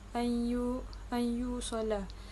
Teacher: Huruf nun mati bertemu dengan ya, memasukkan dan menggabungkan. Idgham ma'al gunnah bermaksud menggabungkan huruf yang sukun ke dalam huruf yang berbaris serta dengung.